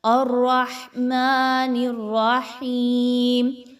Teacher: ہا زیر یا، ہی 2 حرکات کے برابر یا مدہ کی ادائیگی رکھیں گے